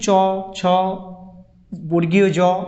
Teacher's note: চ, ছ, বর্গীয় জ, এই ধ্বনিগুলো উচ্চারণ স্থান হচ্ছে তালু